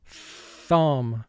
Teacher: the first sound of th is called the voiceless sound because we do not vibrate our vocal chords to make that sound